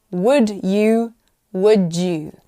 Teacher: d and y often sounds like j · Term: Assimilation